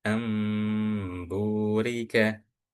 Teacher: Caranya itu dengan mengganti bunyi bacaan nun mati ataupun tanwin menjadi miem. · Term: iqlab